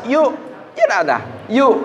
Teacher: memajukan dua bibir itu karena dia mengucapkan baris dhomah